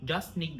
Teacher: We drop the T of just.